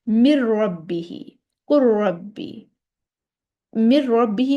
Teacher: مر ربی میں نون پڑھا ہی نہیں جائے گا. مدغم کو نون مدغم ہے اور را مدغم فی ہے. · نون کو را میں اس طرح داخل کریں گے کہ مدغم کی، یعنی کہ نون کی کوئی صفت باقی ہی نہیں رہے گی، نون بولا ہی نہیں جائے گا. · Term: ادغام تام